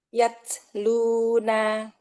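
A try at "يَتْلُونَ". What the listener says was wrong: Sedikit lagi, renggang dikit aja. Itu kebanyakan.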